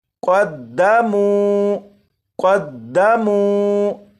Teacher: یہاں پر میم کو ایک الف کے برابر کھینچ کر پڑھا، کیونکہ یہاں پر واو مدہ ہے